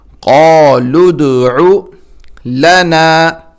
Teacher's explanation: لام کو دال کے ساتھ ملائیں گے اور دال پہ قلقلہ کریں گے